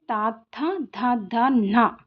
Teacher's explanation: దంత్యాల నుండి పుట్టినవి దంత్యాలు. మన దంతాల నుంచి పుట్టినవి ఏంటి? దంత్యాలు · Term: దంత్యములు